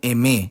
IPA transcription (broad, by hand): eˈme